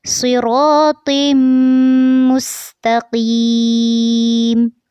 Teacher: تو کو جب میم کے ساتھ ملائیں گے تو یہاں پر غنہ کرنا ہے